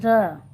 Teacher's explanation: क्योंकि जो र के उच्चारण करते समय जो हमारे मुख से जो ध्वनि निकलती है वह ऐसी लगती है जैसे लुढ़क रही है, र मतलब कंपन करते हुए ध्वनि निकलती है, इसलिए इसको लुंठित वर्ण या प्रकंपित वर्ण भी कहा जाता है।